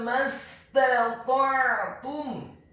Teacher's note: huruf mimnya dibaca fathah, cukup satu harokat saja karena setelahnya langsung disambung ke huruf sin yang sukun